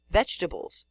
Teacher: in spoken English you say vegetables or even veggies leaving out the middle e you do not say veg ebles despite the fact that that's